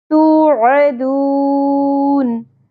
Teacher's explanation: واو ساکن سے پہلے پیش حرف مدہ ایک الف کے برابر کھینچنا ہے، عین کو وسط حلق سے، اور آخر میں مد عارض وقفی.